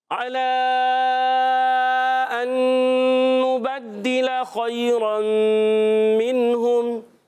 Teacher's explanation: علا میں عین ادا ہوتا ہے حلق کے درمیان والے حصے سے